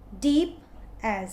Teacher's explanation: stressed unstressed was in trochee